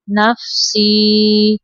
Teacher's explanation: یا ساکن کے پیچھے زیر ہے یا مدہ تھوڑا لمبا کریں گے 2 سیکنڈ تک